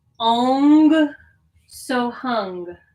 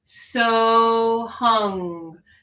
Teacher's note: the back of the tongue kind of presses up against the back of the throat